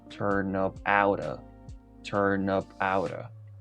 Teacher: La palabra anterior a out termina con una consonante y out inicia con una vocal. La P de up la vamos a unir a la vocal de out. Todo junto sonaría turn up outa, turn up outa.